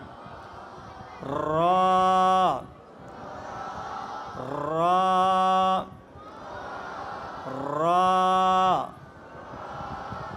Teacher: জিহ্বার আগাটা একটু কাঁপবে, উপরে বাড়ি খাবে